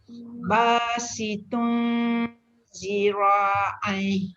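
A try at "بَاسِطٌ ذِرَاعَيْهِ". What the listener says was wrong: Sambil Datuk sebut sambil tengok kat cermin. Gerakkan bibir tu. Gerak tak bibirnya? Kita dah biasa dengan cara kita tak bergerak bibir tu. Rupanya dia nak kena ubah. Nak kena tengok huruf selepas dia tu huruf nipis.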